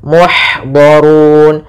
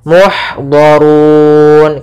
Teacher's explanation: ha ada memiliki sifat hamas yaitu mengalirnya nafas